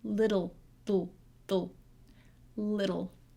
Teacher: the d goes right into the l